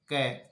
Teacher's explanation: क अल्पप्राण है, क अघोष होता है, क स्पर्शी होता है, क कंठ ध्वनि है